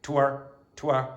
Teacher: he does not pronounce the R sound at the end of syllables. So, he'll say to our to not to our to our to our identity.